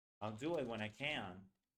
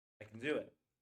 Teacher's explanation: Do matters, can, doesn't.